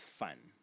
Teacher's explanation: element in this character is this one over here which is pronounced fun in the third tone